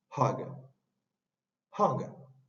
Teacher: Esta no es una letra A, es una A. Es como entre A y O, y esa es la A abierta que le falta el palito del medio.